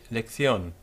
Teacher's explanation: with the C in front of an I becoming a th type of sound